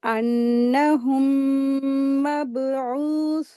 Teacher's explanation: मीम साकिन के बाद मीम आ रही है तो यहाँ पर इदगाम शफ़ी का रूल अप्लाई करेंगे, गुन्ना करके इसको रीडिंग करेंगे। बा के ऊपर जज़म है, इसको कलकला के साथ अदा करेंगे।